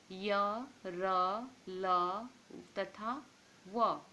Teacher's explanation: अंतःस्थ स्वर और व्यंजन के बीच में स्थित होने के कारण इन्हें अंतःस्थ कहते हैं, अर्थात इनके उच्चारण में जीभ किसी विशेष भाग को नहीं छूती